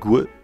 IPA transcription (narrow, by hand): gʷ